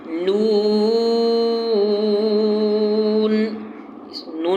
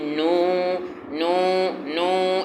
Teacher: نون نکلتے ہی ہونٹ گول کر دیں، اور 5 الف کے برابر کھینچ کے پڑھیں، اور ہونٹ پورے گول ہوں۔ اس کے لیے آپ شیشہ ایک لے لیں اور شیشے میں دیکھتے رہیں کہ میرے ہونٹ گول ہو رہے نہیں ہو رہے۔